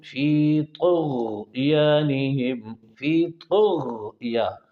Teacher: آپ نے موٹا پڑھنا ہے، غین کو بھی موٹا پڑھنا ہے، اور طا کو موٹا پڑھ کے تا والا مخرج استعمال کرنا ہے ، یہ مخرج تو طا کا تا اور دال والا ہے،